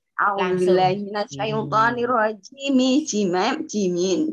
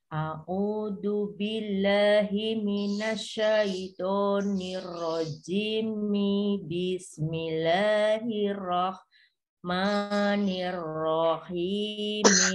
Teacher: Jimnya menjadi dua harokat, tidak enam lagi kalau seperti terputus.